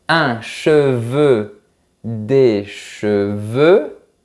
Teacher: Je projette mes lèvres vers l'avant et la langue va vers l'avant.